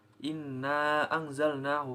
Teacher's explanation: at diatas inna anzalnahu fi nah dunia ini berharokat kan tasdid sehingga dibaca guna atau dengung dengan panjang dua harakat